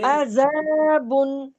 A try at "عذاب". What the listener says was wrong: عذاب، وقت کریں. بو با نہیں نا، ساکن کرنا ہے. جی با بی بو نہیں، ٹھیک ہے.